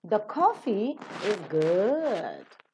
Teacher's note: the tone that we have given is falling and Rising · good which is the last accented syllable in the tone group as the nucleus now this should receive the appropriate tone and the tone that